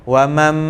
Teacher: Nampak bila kita berdengung, wa mam tu makhraj dia dah ada di tempat mim. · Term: iqlab